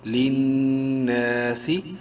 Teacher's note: نون مشدد ہے غنہ ہوگا، ساتھ ہی ایک الف کے برابر لمبا بھی ہوگا